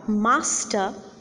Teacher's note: r master has got two syllables in it mass time and the first syllable is more prominent as far as our force is concerned as far as our stress is concerned